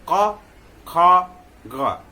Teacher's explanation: इसमें भी ग, यानी अगर क ख ग, चूंकि एक ही वर्ग से है, कंठ से ही बोला जाता है, लेकिन तीनों के बोलने में हम जब बोलेंगे तो जीव मूल यानी जीव का जो अंतिम भाग जो रूट है उसका प्रयोग करेंगे